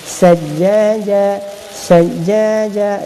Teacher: Jadi dekat sini dah panjang 4-5 harakat, sini pula masuk dengung 2 harakat, sebab fathahatain bertemu dengan huruf sa. Jadi dia jadi ikhfa hakiki, dengung 2 harakat.